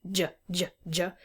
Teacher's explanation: I can call that a voiced postalveolar affricate. So it's voiced, j, j, j.